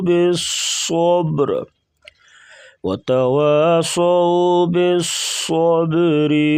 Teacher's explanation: صاد کو موٹا اور با کے اوپر قلقلہ کریں گے